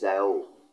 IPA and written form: ɕi̯ɑ́ʊ̯ (xiāo)